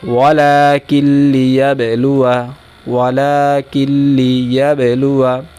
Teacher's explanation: নুন সাকিনের পরে লাম আসছে এজন্য এটা হলো বেলাগুনের কায়দা এখানে কোন গুন্না হবে না